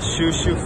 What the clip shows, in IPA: ʃoʊˈʃoʊn